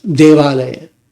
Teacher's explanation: Let's say you combine the word Deva, which means God, with Alaya, meaning abode. You've got that final A sound from Deva bumping into the initial A sound from Alaya. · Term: merged long vowel